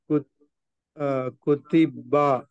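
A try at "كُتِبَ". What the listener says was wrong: దీర్ఘాలు లేవు.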